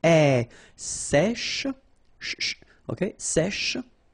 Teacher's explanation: accent grave here. So it's really open.